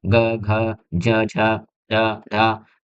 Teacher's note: ऐसे व्यंजन जिनके उच्चारण में स्वर रज्जुओं में कंपन होता है, यानी ऐसे व्यंजन जिनका हम जब उच्चारण करते हैं तो क्या है कंपन उत्पन्न होता है, ठीक है। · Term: सघोष व्यंजन